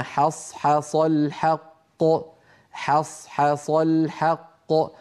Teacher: فعلى التالي أن يرقق الحاءين ويفخم الصادين في كلمة حصحص. والحاء الثانية أكثر عرضة للتفخيم من الأولى، لأن الأولى جاورت صادا، أما الثانية فقد اكتنفها صادان عن يمينها وعن شمالها.